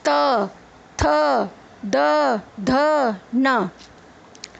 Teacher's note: दंत्य, दांत, दांतों को जीभ टच करेगी।